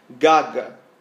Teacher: O palato mole é lá atrás, quando a gente fala assim, gaga, o G encosta no céu da boca, tá? E é uma parte molinha.